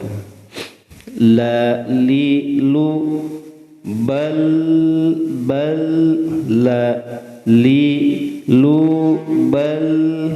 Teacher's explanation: lam itu di ujung lidah dengan langit-langit di bawahnya